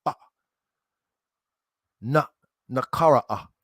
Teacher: puts a glottal stop. So it's like kind of like a pause, like ah na nakara ah.